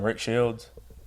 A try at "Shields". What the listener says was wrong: there's no D in that last name